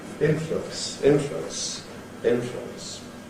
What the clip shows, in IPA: ˈɪnflwəns